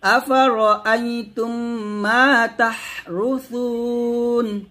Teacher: তারপর আফারাআইতুম মা, আফারাআইতুম গুণ করবেন, মা কে টান দিবেন, আফারা বলবেন না, র বলবেন মোটা করে। আফারাআইতুম মা তাহরুসুন, তাহরুসুন পাতলা করে। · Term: র মোটা